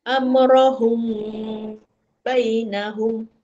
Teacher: Ikhfa syafawi sebab dengung. Ha mim mati bertemu ba dia dengung dua harakat. · Dia dengung dua harakat. Mim mati bertemu ba.